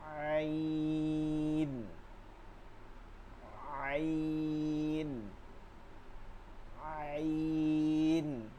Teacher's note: হলকের মধ্যখান থেকে, হলকের মধ্যখান থেকে চাপাই নিতে হবে, আওয়াজটাকে চাপাই নিতে হবে